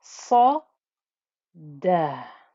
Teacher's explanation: And then you have the sharpness of noise of the hamza with the sukoon. Don't get confused by the fact that the hamza is sat on top of a waw.